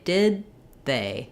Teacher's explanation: when we link to a th sound from a consonant sound from a t or a d or any other stopped consonant sound we don't release that first consonant so rather than saying did they with a break between and